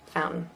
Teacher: there's a t there but I didn't say it what what bet bet so I'm using my tongue to stop